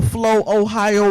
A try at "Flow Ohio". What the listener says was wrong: No, it's Flow Ohio, one word.